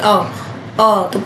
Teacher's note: इसमें जीभ आगे नहीं आती, इसलिए जीभ का मध्य भाग पूरी तरह से सक्रिय हो जाता है। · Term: केंद्रीय स्वर